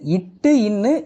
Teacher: நாவின் நுனி அண்ணத்தின் நுனியை பொருந்துவதால் பிறக்கின்றன